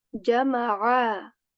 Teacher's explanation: A. A at the end should be prominent, should be correct from the throat. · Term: ain letter of throat